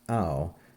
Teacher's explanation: This is a spiritus lenus, and so it's pronounced au, not how.